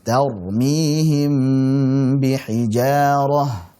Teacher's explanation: Jadi menyembunyikan huruf mim ke huruf ba, yang keduanya sama-sama makhrajnya di bibir. Mim itu terucap dengan rapat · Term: ikhfa syafawi